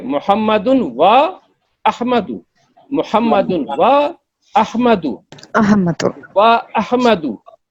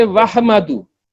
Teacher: When there is hamzatul qat', it will not be allowing the previous sound to meet the sound following it. Do sound ko milayega nahi, but it will disconnect the previous sound.